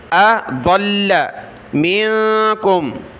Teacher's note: दाद को लाम के साथ मिलाया, लाम को सख्त किया